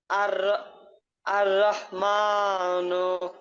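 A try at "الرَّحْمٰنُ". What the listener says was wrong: মোটা হবে। আর র মোটা হবে।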